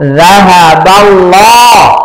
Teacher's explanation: আল্লাহ শব্দের পূর্বে জবর আসছে তাই মোটা হবে, আর মাঝখানে একটা আরিফ একটা লাম পড়তে হবে না।